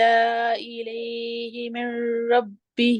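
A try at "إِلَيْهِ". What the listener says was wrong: یا کو کھینچیں گی نہیں، یا لین ہے، نرمی سے ادا کریں گی۔ جی جی، صرف ظاہر کریں گی۔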